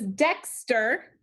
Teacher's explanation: Which syllable is accented in Dexter? The first one, so put your accent mark.